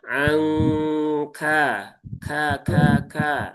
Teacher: Kaf yang sukun juga ada hamesnya